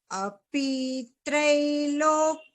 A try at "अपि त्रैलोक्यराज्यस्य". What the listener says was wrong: भगिनी this api p is hrasva only अपि त्रैलोक्यराज्यस्य